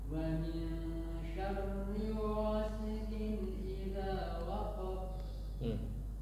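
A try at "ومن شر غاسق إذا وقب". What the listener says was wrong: Jangan dijeda. Waqab jangan dijeda. Waqab jadi dia mantul tapi jangan dijeda.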